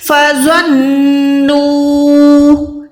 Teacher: الف کو اگنور مار دینا ہے۔ فَظَنُّوا، نو کو لمبا کریں نہ کہ الف کو